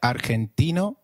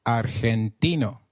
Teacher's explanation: in spanish g when followed by e or i is pronounced like a throaty h